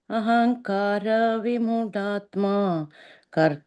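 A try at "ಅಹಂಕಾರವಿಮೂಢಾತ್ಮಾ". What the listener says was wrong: ಮಾತಾಜಿ ಮೂಡಾತ್ಮ ಮಹಾಪ್ರಾಣ ಗಮನಿಸಿ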